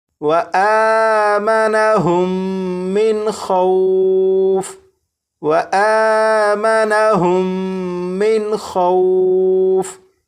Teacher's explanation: لیکن یہاں پر آپ دیکھیں یہاں پر میم ساکن کے بعد دوسری میم ہے تو یہاں پر غنہ کر کے پڑھیں گے. یہاں پر نون ساکن کے بعد خا حروف حلقی میں سے ہے تو یہاں پر نون ساکن کو ظاہر کر کے پڑھیں گے